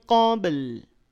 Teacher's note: Sunnatallahi fil ladzina khalau min qabl sama ya, qabl baknya pantulkan, tetapi karena setelah ba itu masih ada huruf, maka pantulannya tidak sejelas saat ada di akhir kalimat. Qalqalahnya qalqalah sughra.